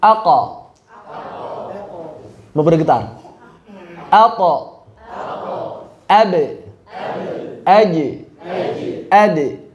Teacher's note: Untuk kutbu jad, mereka dilepaskan sambil mengalirkan suara. Cirinya apa? Ketika memantul, pita suaranya bergetar.